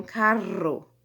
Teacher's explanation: a vibrante múltipla, a gente faz uma vibração mais, né, contínua, né? São várias vezes, né, que a gente faz esse toquezinho aí da língua no céu da boca.